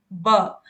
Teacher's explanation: अगर आप ब को बोलोगे ब आप बोल के देखो ब तो दोनों ओठ आपस में मिल रहे हैं